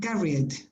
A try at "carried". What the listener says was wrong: Tú le pones una E ahí. No lleva E. Carried. carried.